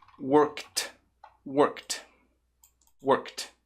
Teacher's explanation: porque aqui eu tenho som de k então com som de k como ele é não vozeado né work depois fica som de t